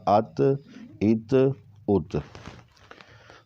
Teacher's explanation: تو یہ اس طرح آگے آ کے ساکن کو متحرک کے ساتھ، اور یعنی متحرک جو ہے وہ ساکن کے ساتھ ملے گا تو یہ اس کا تلفظ ہو جائے گا حمزہ زبر تا ات، یا حمزہ تا زبر ات، حمزہ تا زیر ات، حمزہ تا پیش ات، ات ات ات۔ ٹھیک ہے، تو یہ تا کا تلفظ ہم نے کیا، اس کو موٹا نہیں کیا